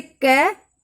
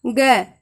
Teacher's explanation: जब हम ग बोलते हैं तो कंपन होता है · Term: सघोष